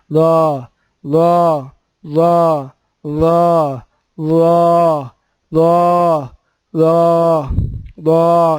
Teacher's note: یہ موٹا ادا ہوگا اور اس میں زبان باہر آئے گی اور اگلے اور پچھلے دو دانتوں کے درمیان